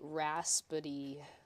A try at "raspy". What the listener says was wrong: Raspy. There's no itty in it.